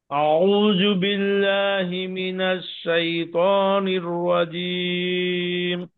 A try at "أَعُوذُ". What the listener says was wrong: দেখেন, আপনি আউ জু পড়তেছেন, জু না তো, এটা জু। জু, জু। আউযু, আউযু। তাহলে আপনার জালের উচ্চারণে সমস্যা আছে, বুঝতে পেরেছেন